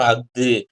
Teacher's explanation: அடுத்து ஆயுத தொடர் குற்றியலுகரம், அதாவது ஆயுத எழுத்து அக்கு அதுக்கப்புறம் வர்ற வல்லின உகரம் வந்து குறைந்து ஒலிக்கும்